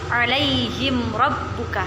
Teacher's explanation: Dan selanjutnya adalah izhar syafawi kita contohkan pada ayat ke-13 yaitu alaihim rabbuka. Jadi jelas mim ketemu dengan ro dibaca jelas alaihim rabbuka tanpa ada dengung